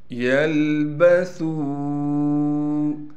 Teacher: سا کو باریک کر کے پڑھنا ہے، سا کے بعد واو ہونے کی وجہ سے سا کو ایک الف کی مقدار کھینچنا تھا، لیکن واو کے اوپر مد بھی آ گیا، لہٰذا 3 الف کی مقدار کھینچیں گے